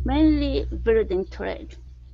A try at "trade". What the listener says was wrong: Get the L in building and the TR. So you don't want to say trade with an U sound. It's trade. Mainly building trade.